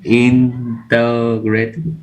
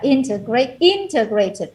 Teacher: integrated, the stress on the first syllable